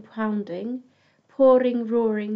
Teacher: you've got the OU sound there repeating and quite a long O sound, drawing out the words.